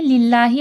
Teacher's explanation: اللہ لفظ سے پہلے زیر ہے، اللہ لفظ موٹا نہیں کیا جائے گا، نارمل للہ ایسا پڑھا جائے گا۔